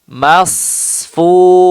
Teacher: ada celah sedikit ya antara lidah dan gigi seri sehingga mengakibatkan suaranya menjadi tajam. Ya, jadilah itu desis.